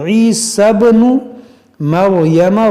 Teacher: دیکھیں یہاں پر سیا کو اور اس الف کو نہیں پڑھیں گے، اس سین کو با سے ملائیں گے